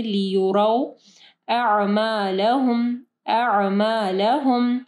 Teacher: वाव साकिन से पहले जो है रॉ के ऊपर ज़बर है, मदलीन आ रही है